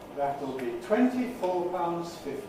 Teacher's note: Now, I made one mistake when dictating. I used a low fall on 50 rather than a high fall.